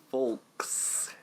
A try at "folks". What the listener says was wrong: It's the folks. You really put the L into folks. I don't think you have to. you don't really pronounce the L in folks. It's folk music, but then you say, "How we doing tonight, folks?" You just say folks, right?